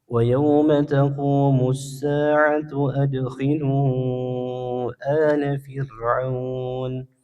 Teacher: huruf dal dibaca qalqalah atau dipantulkan. Kemudian huruf lamnya dipanjangkan 4 sampai 5 harakat, hukumnya mad jaiz munfasil.